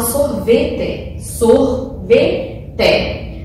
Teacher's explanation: mais força na palavra tá por exemplo a palavra sorvete sorvetec a penúltima sílaba está mais forte